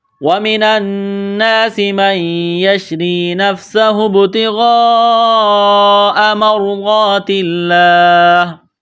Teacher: سین میں سیٹی کی آواز پیدا کریں گے، سین کو باریک کرنا ہے · نون کے اوپر تشدید ہے تو یہاں غنہ کریں گے، آواز ناک میں چھپائیں گے